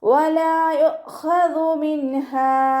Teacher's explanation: ലാമിൻ്റെ കൂടെ അലിഫ് മദ് വന്നു, 2 കൗണ്ട് നീട്ടിക്കൊടുക്കുക. യുഖ്ഖദു മിൻഹ ഹംസ കൽക്കലയുടെ ലെറ്ററിലാത്തത് കൊണ്ട് ഹാഫ് സുക്കൂന് കൊടുക്കാൻ ശ്രദ്ധിക്കുക.